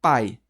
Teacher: o A ele é vogal e o I ele é semivogal. Eu tô indo do mais pro menos, do mais forte pro mais fraco. Eu tô decrescendo. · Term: ditongo, ditongo decrescente